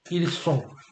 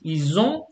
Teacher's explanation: they are is ils sont avec the S sound, and ils ont avec the Z sound